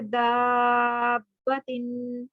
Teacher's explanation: अब यहाँ पे शद है बा के ऊपर, तो पहला वाला जो बा है वो साकिन है और दूसरा मुतहर्रिक है, तो हरूफ मद्दा के बाद साकिन बा आ गया, तो हमने इसको हरूफ मद्दा को लंबा करना है।